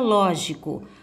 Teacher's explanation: Ao pronunciar a palavra, vocês vão observar que o ló é a sílaba tônica.